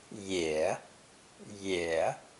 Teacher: this character is pronounced third tone